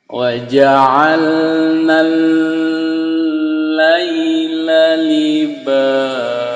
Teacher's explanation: Ini ada tasdid dengan lam, itu kita tahan. Ini idgham bila guna.